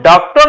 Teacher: जब हम डॉक्टर लिखते हैं तो प्रोनंसिएशन जो हिंदी में हो रहा है वह ओ और अ के बीच का हो रहा है हम डॉक्टर नहीं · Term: आगत स्वर